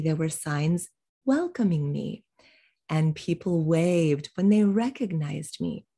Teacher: we reduce pronouns we de-accent them